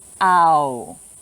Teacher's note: our sound ow is what we call a diphthong it's two vowel sounds pushed together to make a single sound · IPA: aʊ